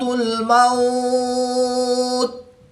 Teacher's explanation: واو ساکن سے پہلے حرف پر زبر ہے، تو واو لین ہوگا